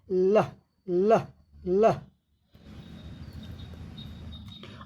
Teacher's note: एयर पाससेस साइज of टंग। हवा जीभ के किनारों से गुजरती है।